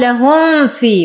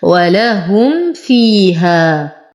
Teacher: من الأخطاء الشائعة أن يقال لهم في وهذا خطأ، والصواب أظهر الميم لوحدها وأظهر الفاء لوحدها فأقول ولهم فيها. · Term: إظهار شفوي